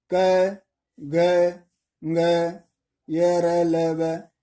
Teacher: इनको बोलने में कम प्राण, कम दबाव लगाना पड़ता, बल लगाना पड़ता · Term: अल्प प्राण